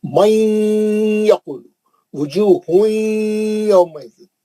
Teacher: نون کو لے کے آپ یا میں گئے، تنوین آیا بھی تو ایسی کرے اور نون ساکن آیا بھی تو ایسی کرے، اس کو بولتے ہیں ادغام مع الغنہ، نون کو سختی سے یا میں ملا کے غننے کے ساتھ پڑھنا